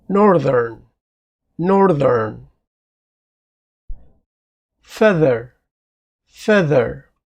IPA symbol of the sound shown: ð